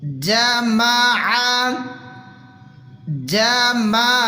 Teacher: عین کو بالکل کلیئر حلق سے نکالیں گے